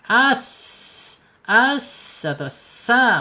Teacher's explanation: sin secara makhraj ada di alisan yaitu ujung lidah menyentuh gigi seri bawah ya